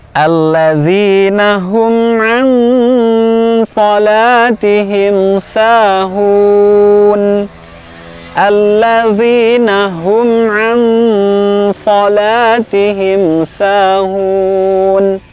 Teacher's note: Pada ayat ini huruf nun sukunnya kita samarkan pada huruf sad. Huruf sad, ya, seperti sin, tetapi pangkal lidah diangkat karena huruf tebal juga.